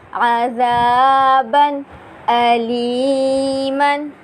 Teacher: تنوین کے بعد حروف حلقی کا حمزہ آ رہا ہے، اس لیے یہاں پر ہم غنہ نہیں کریں گے، یعنی یہاں پر اظہار کا قاعدہ ہوگا۔ · کیونکہ نون ساکن کے بعد، تنوین کے بعد اگر حروف حلقی میں سے کوئی حرف آ جائے تو اظہار ہوگا، یعنی نون ساکن اور تنوین میں غنہ نہیں کریں گے، تو یہاں پر اظہار کا قاعدہ ہوگا کیونکہ تنوین کے بعد حروف حلقی کا حمزہ آ رہا ہے، تو ہم بنا غنہ کیے ادا کریں گے۔